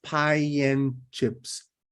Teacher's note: if you pronounce these two words together, you will have to go through the Y sound